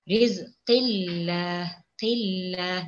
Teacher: Kalau kita ni lihat pada huruf qaf, barisnya baris bawah. Jadi bacaan pada lafzul jalalah kalimah Allah ni hendaklah dibaca dengan nipis.